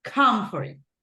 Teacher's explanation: Remember that the stress syllable goes in the first syllable